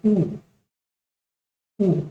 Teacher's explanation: ऊ ऊ बोलने से भी आपके होंठ पास पास आ जाते हैं।